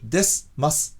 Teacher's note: The vowel is completely gone, replaced by a syllabic S, a pronunciation unique to this vocabulary.